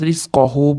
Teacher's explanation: z harfini beramiz rizqohu bo'lib s ga moyil bo'lib ketmasin rizqohu h dan keyin mana kichkina vavcha kelyapti ya'ni madd rizqohu